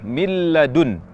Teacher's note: huruf ketiga yang masuk dalam kategori idgham sempurna yakni huruf lam ketika kita mengucapkan idgham ke huruf lam yang kita ucapkan murni huruf lam tanpa menyisakan huruf nun sama sekali